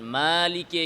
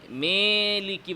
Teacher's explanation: আলিফের আওয়াজের সাথে কিছুটা ইয়ায়ের আওয়াজের মিশ্রণ ঘটানো, ফলে তা আল আলিফুল মুমালায়ের মতো হয়ে যায়, মানে ইমালা হয়ে যায়।